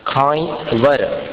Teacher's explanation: खाई ई के ऊपर अनुस्वार है, उसका उच्चारण अनुनासिक